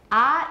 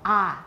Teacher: Ah is the most low, it's the lowest and most back vowel. Ah, 是最后面也是最低的.